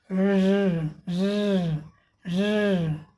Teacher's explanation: जीभ कहीं ऊपर नहीं टच की है।